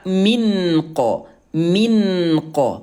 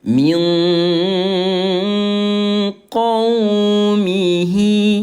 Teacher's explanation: mensamarkan bunyi nun yang baris mati selama dua ketukan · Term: ikhfa